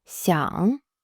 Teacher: 想 (xiǎng) is third tone, so it dips down and comes back up.